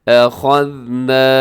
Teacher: نون کو آپ لمبا کیجیے گا کیونکہ اس کے ساتھ الف ہے، یعنی الف سے پہلے زبر ہے، الف مدہ ہے، تھوڑا سا لمبا کیجیے گا۔